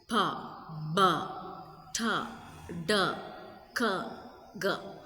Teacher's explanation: Plosive sounds are stopped in the mouth. Complete airflow blockage. Then sudden release.